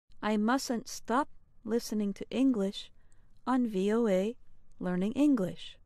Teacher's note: notice how you pronounce mustn't with only one t sound